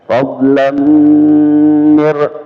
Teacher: tanwin ketemu dengan mim idgham bigunna fadlan. Nah, jadi bukan sekedar dimasukkan saja tapi ada dengungannya